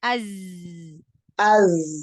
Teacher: Aliran suaranya ditambahkan ketika sukun huruf zainya. Biar dia tampak sifat sofirnya, sifat jaharnya, sifat rokhwahnya.